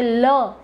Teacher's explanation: લના ઉચ્ચારણ વખતે જીભનો આકાર ઊંધા નળિયા જેવો થઈ જાય છે અને હવા ઘસાઈને પસાર થાય છે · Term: પાર્શ્વિક ધ્વનિ